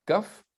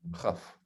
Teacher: On a explosif, kaf, ou spirante, chaf